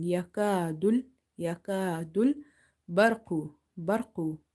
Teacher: So if ra is having fatha or dhamma, ra is heavy. If ra itself is sakin and there is a fatha or dhamma before it, still ra is heavy. Ra is not from the musta'aliya letters, but under certain circumstances we read it heavy.